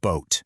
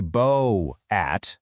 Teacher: They merge together to create one smooth, long O sound. And that right there is a vowel digraph in action.